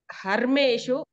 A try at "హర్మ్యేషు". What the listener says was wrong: హర్మ్యేషు యా వినపడాలి, ఇందాక నీకు వినపట్లయ్యా.